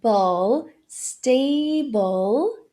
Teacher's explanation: Stay, bowl. Então logo depois do B eu tenho o schwa e o dark L. Bowl, stable.